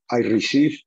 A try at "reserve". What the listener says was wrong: Cuidado. Estás pronunciando el verbo recibir, no reservar. Reserve.